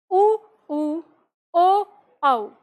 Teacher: उ उऊ ओ औ में आपको होठ के गोलाकार होने को दिखेगा लेकिन जीव का पिछला ही भाग काम करेगा आगे का भाग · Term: पश्च स्वर